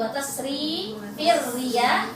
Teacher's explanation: fir juga tipis, fir riya tipis semuanya.